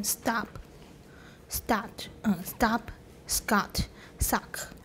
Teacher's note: in many accents of english syllable final ptk are accompanied by an overlapping glottal stop gesture